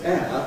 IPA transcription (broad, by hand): eə